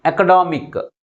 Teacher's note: 1 2 3 4 syllables ఉన్నాయి. ఈ 4 సిలబల్స్లో third syllable మిగిలిన సిలబల్స్ కంటే ఎక్కువ ఫోర్స్గా పలుకుతుంది